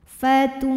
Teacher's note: Wasi'atan fatuha. Ha mad tabi'i zahiri karena ada alif sebelumnya baris fathah, maka huruf ha dipanjangkan 2 harokat.